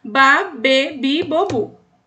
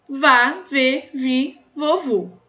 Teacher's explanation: O V no espanhol tem som de B em alguns países. Em outros países tem som de V mesmo